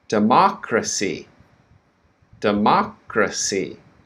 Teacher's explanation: so the stress now is on the second syllable so the first syllable is quick